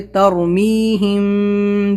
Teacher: رائے ساکنہ اس سے پہلے زبر ہے تو تر موٹا کریں گے